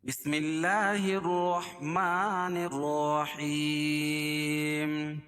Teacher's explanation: حیم، یا ساکن سے پہلے زیر ہو تو یا مدہ، اور وقف کی حالت میں یا مد عارض وقفی ہو جائے گی۔